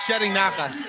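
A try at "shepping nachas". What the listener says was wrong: Shepping. There's a P.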